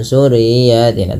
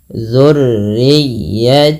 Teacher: ya itu huruf Lin yang di mana ditekannya dengan lembut